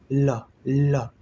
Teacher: जिह्वा जो है बीच में अवरोध करती, बगल से जो है हवा निकल गई, वायु जो है अवरोध होते हुए भी जिह्वा को पार्श्व से, दोनों बगल से पार्श्व से निकल गई, इसीलिए तो इसको पार्श्विक कहा गया। हवा जो है जिह्वा के पार्श्व भाग से निकल गई, इसीलिए इसको जो है पार्श्विक कहा गया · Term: पार्श्विक व्यंजन